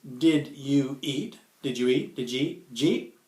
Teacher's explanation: What you see here is that you've got did ya, or ja, plus eat. You've got a vowel at the end of ja, you've got a vowel at the beginning of eat, so these things aren't really distinct from each other.